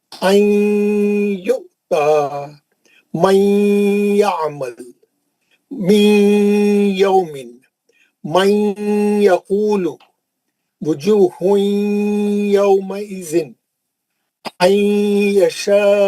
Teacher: جب بھی نون ساکن اور تنوین کے بعد یہ یا واو میم نون میں سے کوئی بھی حرف آئیں گا، ادغام مال غنہ کے 4 حرفوں میں سے کوئی بھی حرف آئیں گا، جیسے یا ہے، نون کو لے کے یا میں چلے جائیں گے اور غنے کے ساتھ پڑھیں گے